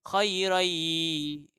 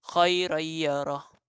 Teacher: nun ni dia masukkan ke dalam ya, jadi ada dengung